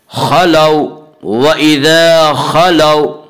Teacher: खलौ वइज़ा खलौ, वावलीन है। वावलीन वो वाव जो साकिन हो और इससे पहले ज़बर हो, और वावलीन को नरम आवाज़ के साथ पढ़ेंगे